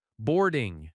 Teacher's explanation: Boarding has stress on board, boarding. The ing is softer.